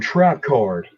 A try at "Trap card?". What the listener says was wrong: You have to say it like you're surprised.